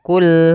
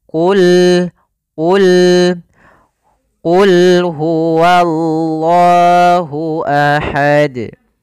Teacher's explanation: Bedakan antara kul dengan Qul huwa. Qul qafnya tebal. Ini hati-hati jangan terbaca dengan kaf. Jangan kul huwa.